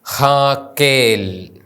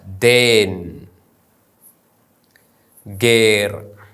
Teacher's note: എ എന്ന ദീർഘ സ്വരത്തിനു ശേഷം വരുന്ന യോദ് ഉച്ചരിക്കുന്നില്ല